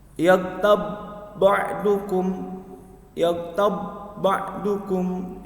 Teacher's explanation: ba mati dipadukan dengan ba di depannya. Namanya idgham mutamatsilain. Jadi enggak dipantulkan ya, tidak dipantulkan. Jadi hanya dipadukan saja.